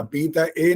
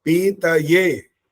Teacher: पीत ए नहीं बोलना होता, पीतये, य में एक ही आवाज आनी चाहिए